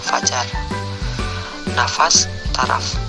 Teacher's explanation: Konsonan F, kriteria bunyi labiodental geseran tak bersuara